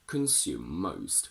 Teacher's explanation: Again, consume ends on a E in spelling, but the last sound is M. So we say consume most with a double M